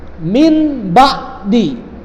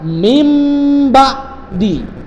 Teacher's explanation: nun mati atau tanwin berhadapan dengan ba, maka pembacanya itu digantikan nun mati atau tanwinnya ke mana? Ke mim. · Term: iqlab